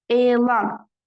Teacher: Elan uzanma var birinci hecada, amma vurğu düşür sonuncu hecanın üzərinə.